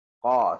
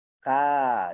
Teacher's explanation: so qaf adalah huruf tebal. Okay, sebab apa? Bila disenyumkan, maka dia pergi ke arah huruf kaf